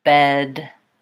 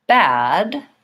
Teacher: we're looking at this ah vowel. So this is a front open vowel.